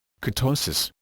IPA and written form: kɨˈtoʊsɨs (Ketosis)